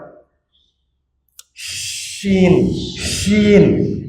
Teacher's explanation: আরবি ভাষায় এই অক্ষরটার নাম হচ্ছে হারফুত তাফাশি, হরফুল ইন্তিশার, যে অক্ষরের আওয়াজ দূরে ছড়িয়ে যায়, চিকন চিকন জায়গা দিয়ে বের হয়ে প্রসারিত হয়